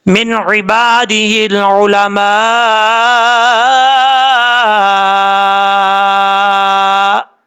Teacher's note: جب ہم وقف کریں گے تو حمزہ کی ہاف حالت پڑھی جائے گی، یعنی حمزہ کا آدھا حصہ جو ہے وہ پڑھا جائے گا